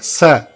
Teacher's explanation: When you say sa, as in Saraswati, your tongue will touch the lower part of the teeth, sa, and the sound will come above the tongue